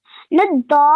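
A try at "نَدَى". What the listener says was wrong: Remember, not too long. 2 seconds is enough, or 2 counts, okay? Nadda.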